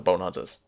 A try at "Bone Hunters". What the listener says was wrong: No, you said bone hunters, but the way you pronounced it, it sounded like you said bone udders.